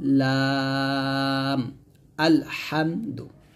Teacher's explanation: জিহ্বার আগার কিনারা তার বরাবর উপরে তালুর সঙ্গে লাগিয়ে আমরা লামটা উচ্চারণ করব। এই যে জিহ্বার আগার কিনারাটা আমরা কিন্তু তার বরাবর উপরের তালুর সঙ্গে লাগিয়ে আমরা লামটা উচ্চারণ করছি